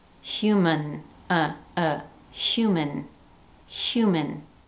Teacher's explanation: For example, in the word human, the first syllable carries the primary stress and the second syllable is unstressed. Rather than pronounce the second syllable as the word man, as we would in the singular word man, it takes on the schwa.